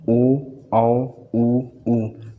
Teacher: वे स्वर जिनका उच्चारण करते समय होंठ गोल हो जाता है या फिर क्या होता है, वृत्त की आकृति के अनुसार हो जाता है, तो उन्हें हम लोग क्या कहते हैं, वृत्ताकार स्वर कहते हैं।